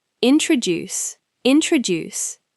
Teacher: In the word introduce, the stress is on the last part, introduce. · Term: Word stress